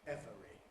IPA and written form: ˈevəri (every)